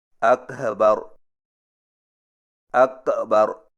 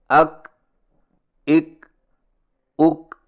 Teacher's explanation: کاف اردو کے لفظ کھا کی مثل سنائی نہ دے، اور نہ ہی اس کی ادائیگی میں ہا اور حمزہ کی آواز پیدا ہو۔ مثلا اکبر کی بجائے اکبر، اکبر، اکبر ہو جائے، اور یہ غلط طریقہ ہے۔